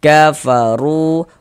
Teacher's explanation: Di sini yang kita temui dhammah nih, maka huruf ra dibaca tafkhim, dibaca tebal, sehingga pangkal lisan kita naik terangkat ke atas ketika kita mengucapkannya.